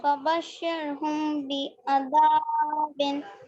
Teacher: मीम साकिन के बाद बा अगर होता है तो मीम को गुन्ना करते हैं, इख्फाए शफवी इसको बोलते हैं। मीम साकिन के बाद अगर बा होता है तो मीम को गुन्ना करते हैं, हुम।